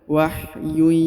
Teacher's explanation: Huruf yu dipanjangkan 2 harokat karena di depannya terdapat waw sukun ya